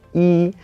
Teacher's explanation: whenever it's used as a number, it's just a plain first tone